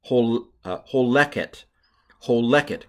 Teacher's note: And with a segalit form, the second to last syllable is accented